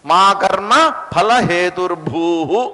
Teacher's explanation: ఉకారాంతంతో ఎండ్ అయినప్పుడు హూ అని చదవాలి దాన్ని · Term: విసర్గ